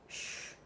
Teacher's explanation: Plus anterior sounds are produced at the front of the mouth, like t and s. Sounds like sh are minus anterior because they are produced further back.